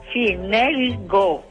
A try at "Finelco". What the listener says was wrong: No, co. No, senza il go, il co, con la C. No, co, con la C.